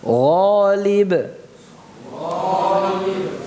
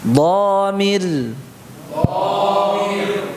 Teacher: Gha ya, tebal. Tapi tidak setebal dha. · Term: infitah